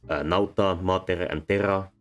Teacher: Nauta, mater, and terra are all two syllables, so the stress syllable is the first one.